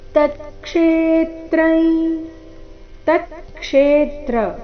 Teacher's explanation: ಕ್ಷೇ ದೀರ್ಘ ಬಂದು ಆಘಾತ, ಅನುಸ್ವಾರದ ಉಚ್ಚಾರಣೆ ನಾಸಿಕಾಯ ರೀತಿ.